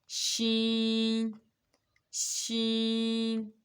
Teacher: وسط زبان سے مراد زبان کا درمیان والا حصہ جب اوپر والے تالو سے لگے گا تو شین ادا ہوگی۔